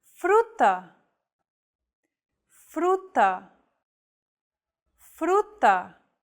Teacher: on the second letter true this Trill sound is done by lightly tapping the gum Ridge behind your upper teeth with the tip of your tongue it should be a quick striking motion similar to The Sensation